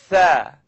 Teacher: So it's the tip of my tongue coming up out at the edge of my top teeth. Now I'd just like you to simply blow the air between your tongue and your teeth.